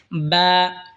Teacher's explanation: বা দুই ঠোঁট হয়তো উচ্চারণ হবে বা।